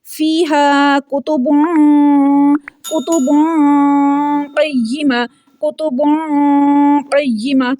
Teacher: تنوین کی آواز کو ناک میں چھپا رہے ہیں۔ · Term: اخفا